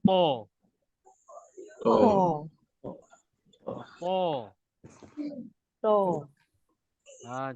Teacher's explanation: Lidah depan ke gigi atas. Lidah belakang terangkat. Dia ibaratkan macam huruf ta bergabung dengan huruf ka tadi tu lah. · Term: huruf to